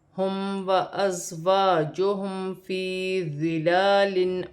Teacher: میم ساکن میں غنہ نہیں ہوگا، زا ساکن ہے، سیٹی کے ساتھ ادا ہوگا اپنے سے پہلے حرف کی حرکت کے ساتھ ملا کر. یا ساکن سے پہلے زیر ہے تو یا مدہ بنے گی.